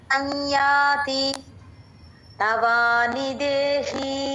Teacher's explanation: సమ్ అని మొత్తం పలకూడదు ముక్కుతో రావాలి సౌండ్